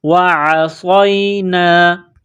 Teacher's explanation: عین کو گلے سے نکالیں گے زور لگا کر، صاد کو موٹا کرنا ہے، صاد میں سیٹی کی آواز پیدا کرنی ہے، صاد کو یا کے ساتھ ملانا ہے، وعصینا۔